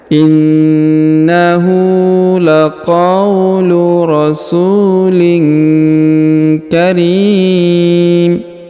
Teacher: huruf tanwin in bertemu dengan huruf k maka didengungkan dan disamarkan · huruf RI dipanjangkan boleh dua boleh empat boleh enam harakat ya karena di depan huruf RI terdapat Ya Sukun sebelum huruf